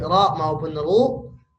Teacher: kalau ro yang fathah dan dah baik ro maupun ru pangkal lidahnya naik jadi tebal